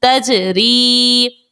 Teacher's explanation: تجری کے اندر جیم جو ہے یہ ساکن تھا اور جیم حرف قلقلہ کا تھا، اسی لیے جیم کو خوب ظاہر کر کے ادا کیا